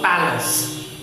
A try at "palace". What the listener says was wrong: palace. P-A. It's not place. The word is P-A-L-A-C-E.